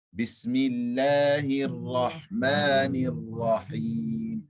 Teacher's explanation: Rahman, Rahim, the Ra is full mouth.